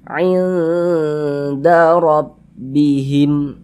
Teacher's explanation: Sehingga kita baca nunnya itu kita baca samar dan berdengung. Jangan dibaca ain nunnya itu sempurna, jangan, tapi disamarkan bunyi nunnya tuh. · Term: ikhfa hakiki aqrab